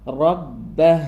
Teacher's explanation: റ ഹെവിയാന്ന് ബ ഇരട്ടിപ്പിച്ചു പറയാം